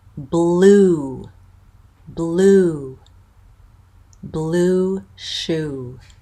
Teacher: it's a tense vowel and it ends with an off Glide so it's ooh ooh so it's not a pure vowel it's